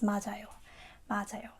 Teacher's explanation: We just connect to the vowel, so it becomes mad ayo.